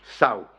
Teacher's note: con dicción popular ceseante y pérdida de la sibilante final, se pierde la S final, como en todo en andaluz, se pierde la S final, no pronunciamos la S final ni la Z, y es, por tanto, apócope, es apócope de sauce, sau es de south.